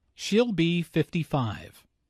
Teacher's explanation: Notice that 55 is stressed here. This detail answers the question, how old is she?